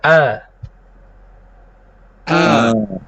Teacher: a ini berbunyi karena yang tadinya menutup sekarang terbuka dan bergetar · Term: Hamzah yang berharakat